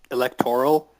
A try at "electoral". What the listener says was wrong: No, it's electoral. It's just a different emphasis. That's all it is.